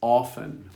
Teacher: I generally say often, which is not the most common pronunciation. The most common is often without the T.